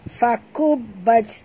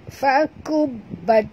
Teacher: dekat ba kena jut atau kena tekan kerana ada tashdid